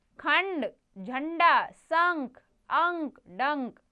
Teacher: यह क्या है अनुस्वार इसका उच्चारण नाक से होता है